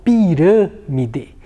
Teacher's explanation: A sílaba rã, ela é uma sílaba mais fechada. Então, quando o timbre da vogal é mais fechado, eu utilizo o acento circunflexo.